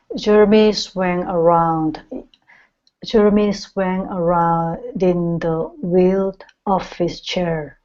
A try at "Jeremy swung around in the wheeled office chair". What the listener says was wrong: Okay, so here you're saying around din. Okay, so you're trying to use the connection here, but you're pronouncing the D twice.